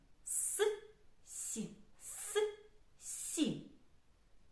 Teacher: повітря на своєму шляху зустрічає перешкоду зуби і тому звук с називається твердим приголосним а звук називається м'яким